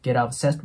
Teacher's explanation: obsessed▁の▁t▁の音はなくなっていいので